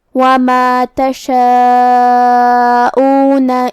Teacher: کلمت تشاؤون یہاں بھی مد واجب متصل ہے، تو ہم اپنی آواز 4 مد کے برابر لمبی کریں گے۔ آخر میں نون پہ زبر ہے تو ہمیں نون کو زبر سے ادا کرنا ہے۔